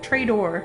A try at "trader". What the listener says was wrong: Trader. That sounds more like traitor. D equals T in the Midwest.